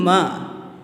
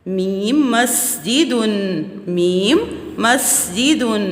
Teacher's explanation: بچوں، میم جو ہے وہ ہمارے دونوں ہونٹوں کے خشک حصے سے ادا ہوتا ہے، میم ہمارے دونوں ہونٹوں کے خشک حصے سے ادا ہوتا ہے